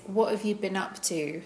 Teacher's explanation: So there I'm using a glottal T.